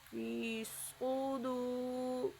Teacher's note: صاد کو موٹا بھی پڑھنا ہے اور صاد کے اوپر پیش پڑھنی ہے۔ فی صدور، را کو باریک پڑھنا ہے۔